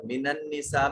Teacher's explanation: نساء کے اوپر یہ بڑی مد ہے 3 سے 4 الف کے برابر، کم سے کم اس کو لمبا کریں گے۔